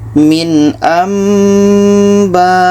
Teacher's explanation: bunyi nun tidak ada lagi ya, kita tukar ke mim. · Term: iqlab